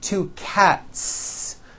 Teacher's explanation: Again, the S ending is unvoiced.